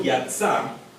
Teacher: Sin embargo, al encontrarse en esa posición de cerrar sílaba, Aleph pierde su valor como una pausa. Entonces ya no hay pausa al cierre de la sílaba. Simplemente la sílaba entonces queda abierta.